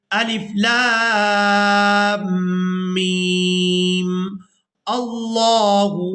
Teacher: اگر ہم آیت کے مکمل ہونے پر وقف کر دیں تو پھر ہم الف خالی کے اوپر زبر لگائیں گے اور اس کو لفظ اللہ کے لام مشدد کے ساتھ ملائیں گے